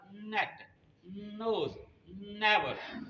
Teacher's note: जबान ऊपर लगाएंगे, अब जबान नीचे करेंगे तो बनेगा नेट, नोज, नेवर। तो एन पर आप हर बार अपनी जबान ऊपर लगाते हैं और वहां पर हवा को रोकते हैं · अपनी जबान को ऊपर तालू को लगाएंगे, मुंह की जो छत है उस पर लगाएंगे और वहां पर हवा को रोकेंगे, फिर नाक से निकालेंगे। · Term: एन की आवाज